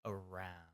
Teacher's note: When I'm pronouncing that R, my tongue is actually kind of back in my mouth, kind of like sitting low and back.